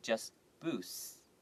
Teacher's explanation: you just make the T sound a little bit less and then make the S sound a little bit longer not too long just boosts okay alright so boost the economy